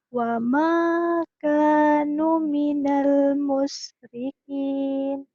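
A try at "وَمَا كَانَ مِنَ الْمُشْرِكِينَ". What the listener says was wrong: Ini bukan no, tapi na. Wa ma kana minal musyrikin.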